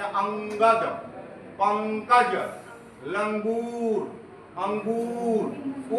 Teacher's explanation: अनुस्वार उसको कहते हैं जिस वर्ण के उच्चारण में हवा केवल नाक से बाहर निकलती है उसको हम अनुस्वार कहते हैं।